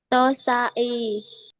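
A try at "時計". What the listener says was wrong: Hampir betul. Yang ini ke. Jadi tokei.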